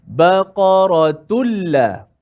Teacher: Okey, tak boleh baca baqaratun la masuk hidung juga, tak ada. Suara tanwin tu, suara nun mati tu dah dimasukkan ke dalam lam. Sebab tu kalau kita lihat kedua-dua hukum ini, kedua-dua contoh ini, di atas huruf lam tu ada tanda sabdu.